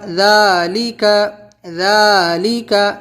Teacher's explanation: ذال کھڑا زبر ذا، لام زیر لی، ذالی، کاف زبر کا، ذالکا، ذالکا، اس کو کھینچنا، ذا کو، لکا نہیں کھینچنا بالکل بھی